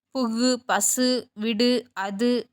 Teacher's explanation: ஒரு மாத்திரை அளவுக்கு முழுமையாக ஒலிக்கும் வல்லினம் அல்லாத உகரங்கள் எப்போதும் முழுமையாகவே ஒலிக்கும் ஓசை குறையாமல் ஒரு மாத்திரை அளவில் முழுமையாக ஒலிப்பதை முற்றியல் உகரம் என்பர்